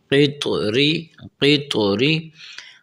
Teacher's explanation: طا اس طرح آواز نکلے کہ طا پڑھتے وقت تا بھی محسوس نہ ہو، ٹھیک ہے، طا اپنی آواز میں ہو، اصل میں ہو۔